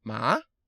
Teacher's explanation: rising tone, like you're asking a question, like there's a question mark at the end of a sentence. Ma. So that's an incline.